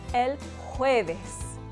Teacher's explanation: we start the word with a soft aspiration because it begins with a jota.